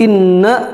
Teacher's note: Nun bertasdid dan mim bertasdid maka Bacanya adalah dengan gunah yang maksimal jangan terburu-buru dalam dalam lafadkan harus tenang